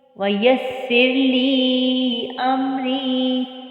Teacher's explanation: سین سیٹی والی حروف میں سے ہے لیکن اسے ہم باریک پڑھتے ہیں